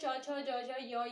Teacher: दांत से पीछे मसूड़े। मसूड़े के बाद वाला भाग क्या होता है? तालु होता है। ठीक है, उसको स्पर्श करते हुए ये ध्वनि निकलती है।